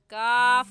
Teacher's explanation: तो मखरज ऐसे होगा कि ज़बान का आखिरी हिस्सा जो कव्वे के पास है उस आखिरी हिस्से को ऊपर तालू यानी हलक में ना लगाने से काफ निकलता है। काफ कहेंगे, काफ की जगह कौफ कहना दुरुस्त नहीं है।